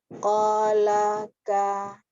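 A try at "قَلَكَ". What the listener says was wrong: Buka, jangan ko. Buka lagi. Pokoknya kita kalau berharokat fathah itu ya, jangan malas buka mulut. Tetap harus dibuka.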